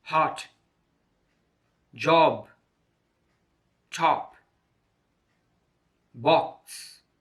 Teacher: is a single and short vowel sound the mouth is wide open the tongue position is at the back side of the mouth